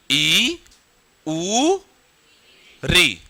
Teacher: इन तीनों में मुख सबसे कम खुलता है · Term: संवृत्त